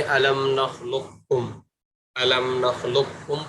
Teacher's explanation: قاف بالکل نہ پڑھا جائے بلکہ قاف کو کاف سے بدل کر اور دونوں کو مشدد ملا کر مشدد کر کے پڑھا جائے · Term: پورا ادغام